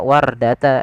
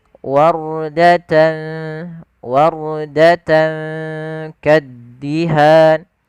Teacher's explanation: Pada lafal warda, di sini ada huruf ra sukun ditandai dengan warna biru, yang dimana di sini kita namai dengan huruf ra tafkhim, yaitu ra yang dibaca dengan bacaan ra tebal, bukan dibaca wardata, yaitu huruf ra-nya tipis tapi tebal.